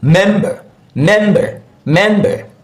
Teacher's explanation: Since it's two syllable, the first syllable, that's where we normally have the stress syllable. That's mem, mem, that's the syllable.